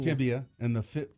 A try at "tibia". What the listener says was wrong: there's no L in the tibia.